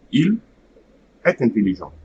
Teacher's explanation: between est and the second word, there should be no pause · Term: liaison